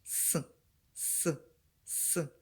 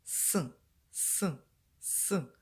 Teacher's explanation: кінчик язика заховався за Нижні зуби зуби не випускають звук вони створюють перешкоду в роті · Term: звук с